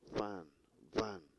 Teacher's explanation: Lower lip and upper teeth. Lower lip and upper teeth. And they are labiodental.